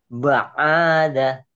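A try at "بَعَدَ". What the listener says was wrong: Nggak ada yang panjang. Ba'ada, ba'ada, ba'ada. Iya, belum ada mad ya, masih pendek semua.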